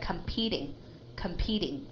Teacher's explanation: That T will be a D sound. Okay. And we call that a quick D sound.